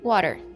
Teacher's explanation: This is called a rhotic accent because the R is clearly pronounced.